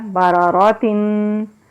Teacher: اب یہاں پر دیکھیے تا کے نیچے ریڈ کلر کی تنوین ہے، اس کا مطلب یہ ہے کہ یہاں پر ہم اخفا کریں گے، یعنی کہ تنوین کے آگے جیم آ گیا تو یہاں پر اخفا ہوگا، یعنی کہ ناک میں آواز کو چھپائیں گے، جو نون کی آواز آتی ہے نا اس کی آواز کو ہم ناک میں چھپائیں گے